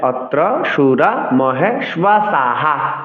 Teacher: বিসর্গের ব্যবহার করতে হবে তো বিসর্গের ব্যবহার করলে অত্র সুরা মহেশবাসাহা বিসর্গের জন্য হ উচ্চারণ করব বিসর্গের পূর্বের ব্যঞ্জন দন্তস দন্ত সাথে আকার রয়েছে আকারের উচ্চারণকে আমাদের হর সাথে যুক্ত করে উচ্চারণ করতে হবে । এজন্যই অত্র সুরা মহেশহা আট অক্ষর সংস্কৃত শ্লোক উচ্চারণে বিসর্গ